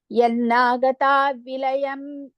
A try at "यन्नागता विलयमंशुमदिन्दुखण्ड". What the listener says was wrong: no don't say vilayam it is vilayamam so yannagata vilayamam so vilayamam yannagata vilayamam shumadindukanda like that mum okay after vilaya it is mum so yannagata vilayamam shumadindukanda